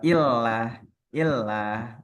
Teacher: Lam. Lam ini ternyata tipis kalau kita baca normal.